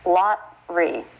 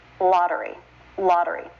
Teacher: For example, someone asked me about the word lottery. There's an unstressed vowel, the schwa, followed by the R, but we wouldn't drop that syllable, turning it into a 2-syllable word, lot-ry.